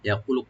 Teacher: ইয়াকুলু কু একালে টানবেন, লু একালে টানবেন